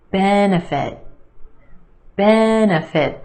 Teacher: 3 syllables here. Our emphasis on the first syllable